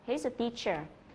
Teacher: Ví dụ như là he's a teacher thì các bạn sẽ không nhấn vào cái từ is